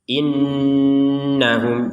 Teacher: lancar karena hukumnya ya itu-itu aja gitu ada Nun bertasdid jadi setiap ketemu dengan Nun bertasdid ya didengungkan 100%. innahum jangan sampai dibaca tidak ada dengung innahum innahum nah itu